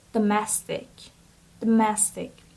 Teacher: So the stress is on the second syllable, so it's domestic.